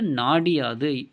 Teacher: அந்த இகரம் தனக்குரிய ஒரு மாத்திரை அளவிலிருந்து அரை மாத்திரை அளவாக குறைந்து ஒலிக்கும் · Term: குற்றிய லிகரம்